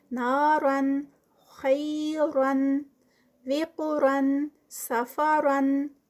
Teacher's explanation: تنوین جہاں جہاں آئی ہے 2 زبر والی تو اس کو ہم نے موٹا ادا کیا ہے